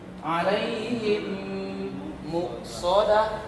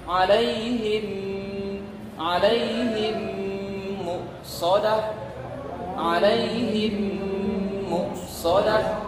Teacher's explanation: dengung ditahan sekedar 2 harakat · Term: idgham mimi